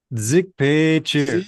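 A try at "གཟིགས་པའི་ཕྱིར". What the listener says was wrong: Seek. It's not a z.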